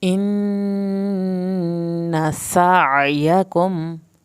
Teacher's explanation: नून की शत पे देर लगानी है, नून की ज़बर को नहीं खींचना।